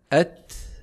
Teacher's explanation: من بعد طرف اللسان يعني من بعد مخرج التاء ات ولاحظ بانه لا يجتمع هو والاسهم لاحظ اذا في اسهم